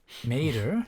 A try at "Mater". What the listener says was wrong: You pretty much had the pronunciation of the E right, but you still pronounced it in English. Yeah, you said Mater. No, it is Mater. but you said Mater.